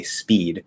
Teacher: that s kind of weakens the p